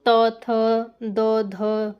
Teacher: जिनका उच्चारण क्या होता है दांतों के स्पर्श से हो वो दंत वर्ण कहलाते हैं